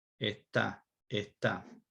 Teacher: So the S is deleted, assimilated, depending on how you want to treat it. And then that T becomes longer. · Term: consonant lengthening